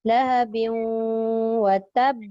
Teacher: Nak berhenti lahab kan. Dan qalqalah kubra ataupun akbar, dia ada tanda sabdu. Tahan dulu baru dia lepaskan.